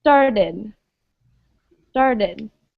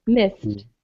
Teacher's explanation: one word that's pronounced with id is started. Started. Whereas missed is pronounced like a T sound.